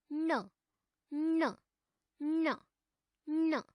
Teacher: अस्यापि उच्चारणस्थानं नासिकया सह मूर्धा अस्ति।